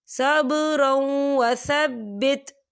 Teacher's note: یہاں دیکھیں صبرا، را کے پر تنوین ہے اور تنوین کے بعد واو آ رہا ہے، واو جو ہے حروف یرملون میں سے ہے، تو یہاں پر ادغام ہوگا اور تھوڑا سا غننے کے ساتھ